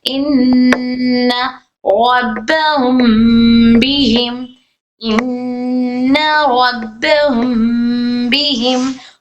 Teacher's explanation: जैसे इन, यहाँ पर नून पर तशदीद है इसलिए गुन्ना कर रहे, इन रब्बहुम बिहिम, इन रब्बहुम बिहिम, हम में गुन्ना कर रहे हैं हम। क्यों, क्योंकि मीम साकिन के बाद बा आया है तो इख्फा का कायदा हो रहा है।